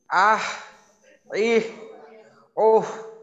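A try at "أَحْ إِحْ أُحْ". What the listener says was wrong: আচ্ছা, আহ এই সময়টায় হায়ের উচ্চারণটা বোঝা গেল, কিন্তু যখন ইহ এবং উহ এই দুইটা সময় কিন্তু হাটা এই গোলহার মতো, অনেকটা গোলহার মতো হয়ে গেল ইহ এবং উহ এই দুইটা ক্ষেত্রে।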